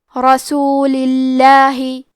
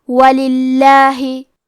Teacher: ہم حرف اللام کو پتلی آواز میں پڑھیں گے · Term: ترقیق